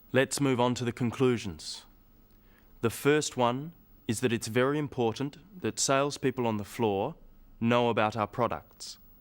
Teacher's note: you'll notice small pauses in the middle of sentences, after phrases. These help the listener to follow what is being said.